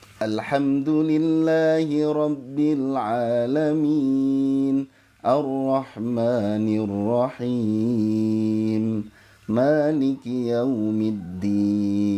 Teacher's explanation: Jadi bayati pertama naik, bayati kedua datar, bayati ketiga turun. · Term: naik datar turun